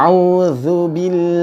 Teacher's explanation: lam pada lafadz Allah di sini juga diucapkan dengan tipis